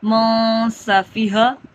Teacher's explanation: سینے والا ہا ہے۔ ٹھیک ہے، حلق والا ہا نہیں ہے، سینے کی جانب سے